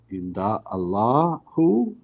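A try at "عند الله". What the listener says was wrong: There's a kasra on the ha. And if you're joining, indallahi. So straight from the dal to the lam.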